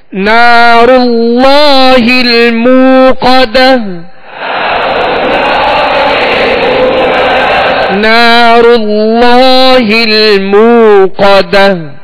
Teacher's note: اللہ عز و جل کے لام سے پہلے زبر ہے، لہذا اللہ عز و جل کا لام پر یعنی موٹا پڑھا جائے گا